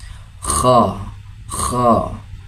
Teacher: Huruf kha, posisi hurufnya berada di bagian tenggorokan paling atas, yaitu daerah pangkal lidah dan langit-langit mulut yang berdaging. Kha, kha, seperti bunyi orang ngorok atau orang tidur ya.